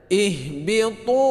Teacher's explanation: ihbitu ini mad panjang dua harakat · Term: Mad thabi'i